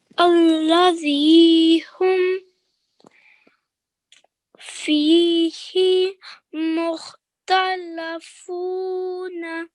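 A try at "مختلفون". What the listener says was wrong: However, here you changed the stroke from kasra to fatha, okay? So would you like to try this word again?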